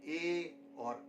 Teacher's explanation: ए दई तौ कंठ तालु, अर्थात कंठ और तालु के प्रयोग से हमें ए और ऐ की आवाज़ें प्राप्त होती हैं